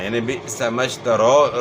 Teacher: بئس ما اشتروا به انفسهم، بئس جھٹکا ہوگا، حمزہ ساکن ہے تو حمزہ ساکن میں جو ہے جھٹکا ہوتا ہے، اور اس کے بعد پھر میم کو شین کے ساتھ ملانا ہے آپ نے، اور اس کے بعد پھر واو لین ہے.